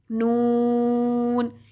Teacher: इसमें एक दांत कम हो जाएगा और तीन दांतों के मसूड़ों से लगेगी तो नून अदा होगा